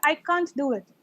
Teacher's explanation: now what happens in a sentence like I can't do it the T and the D sound they merge together right touch together